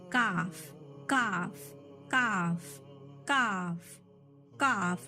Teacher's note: महसूस होगा काफ कौन सी जगह से निकल रहा, ठीक है, जबान की जड़कन से काफ निकल रहा